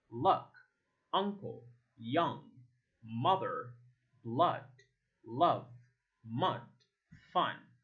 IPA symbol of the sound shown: ʌ